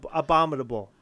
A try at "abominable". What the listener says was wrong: No, you put a D in it. Abominable.